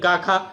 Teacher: फिर अघोष की बात करें तो इसमें पहला दूसरा वर्ण होगा यानी क ख।